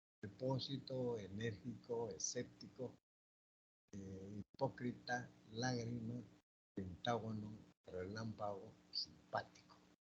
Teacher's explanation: Las esdrújulas presentan la mayor fuerza de voz en la antepenúltima sílaba. La regla siempre lleva tilde.